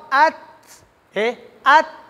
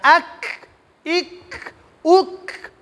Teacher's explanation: کاف او تا په دې کې صفت همس ادا کول پکار دي